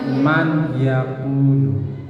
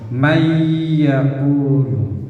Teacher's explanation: maka suara ya ini dimasukkan, suara nun ini menjadi hilang, tetapi harus didengungkan. Nah, seolah-olah ya ini menjadi mempunyai tasdid. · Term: idgham bigunnah